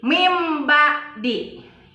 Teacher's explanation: Karena ada huruf ba di depannya, ya. Jadi asalnya min dibaca menjadi mim ba'di. Ya, itu contoh iklab, hurufnya ada satu ba.